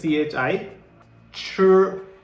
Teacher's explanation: our tongue is curled up and back and our vocal cords are vibrating